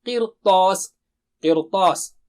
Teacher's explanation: اسی طرح قرطاس ہے، صرف قر بولیں گے تو را باریک رہے گا، لیکن طا بہت موٹا اونچا ہے، سازا تازا میں سے ایک ہے تو اس میں سے کوئی ایک حرف آئے تو بھی را کو موٹا کر دیں گے آسانی سے بولنے کے لیے، بجائے ہم اس کو کہیں کہ قرطاس، قرطاس را موٹا ہو جائے گا۔